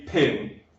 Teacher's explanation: when it's on its own, in a word like pin, you get the jet of air